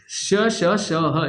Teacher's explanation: क्योंकि जब इन वर्णों को हम बोलते हैं तो हमारी जिह्वा और तालु आपस में टच कर जाती हैं और हवा उसके बीच से घर्षण करती हुई निकलती है। घर्षण करते हुए निकलती है तो संघर्ष होता है, इसलिए इनको संघर्षी व्यंजन भी कहा जाता है।